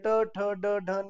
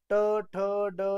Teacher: ट म्हणलं की जिभेचं टोक वरती आपल्या तालुला तालू आणि कंठ यांच्यामध्ये जाऊन चिटकतं